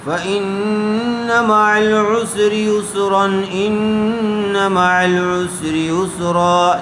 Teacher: جب اس کو یسرن پڑھیں گے تو بغیر غنّے کے پڑھیں گے، بغیر غنّے کے جلد اظہار کر کے پڑھیں گے، اس لیے کہ تنوین کے بعد حروف حلقی میں سے حمزہ آیا ہوا ہے.